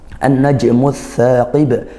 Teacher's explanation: Assaqib juga idgham syamsiah. Al bertemu huruf tsa. Huruf syamsiyah juga tsaqib.